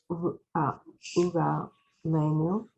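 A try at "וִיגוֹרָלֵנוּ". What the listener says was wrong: V. It's a V, not a U.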